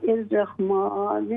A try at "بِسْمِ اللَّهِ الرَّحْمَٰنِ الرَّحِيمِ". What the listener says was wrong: بسم الله الرحمن الرحيم. हा को क्लियर करें, बिस्मिल्लाह हा.